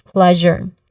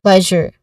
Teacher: Now, plus, plus, so there's a buzzing sound there. The second syllable, jour, it has a schwa sound. So which means there's a unstressed and quick vowel sound here.